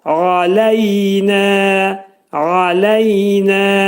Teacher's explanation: qayn hərfi boğazın ortasından çıxarılır.